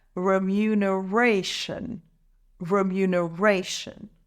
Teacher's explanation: the stress is on the fourth syllable raw let's say it together remuneration remuneration word number nine is